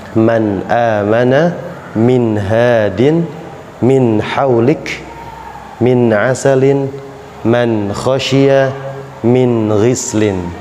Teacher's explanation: Jadi idhar halqi jelas di tenggorokan